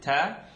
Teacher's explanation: ta is the tip of the tongue behind the top two teeth